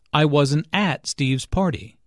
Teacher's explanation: negative question to show his surprise I wasn't at Steve's party notice that the emphasis here is on at although prepositions normally have weak stress